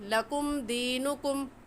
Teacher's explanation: تو اس میم ساکن پر ہم غنہ نہیں کریں گے